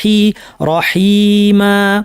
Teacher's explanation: ইয়া সাকিন পূর্বের হরফ কি? হা, হাতে কি আছে? জের, তাহলে এটা মাদ্দের ইয়া, হি টেনে পড়তে হবে